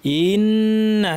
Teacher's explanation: হামজার পরে একটু টানের মত চলে এসেছে পরিপূর্ণ টান না হলেও এটা ঠিক না ইন্না হামজা গিয়ে সরাসরি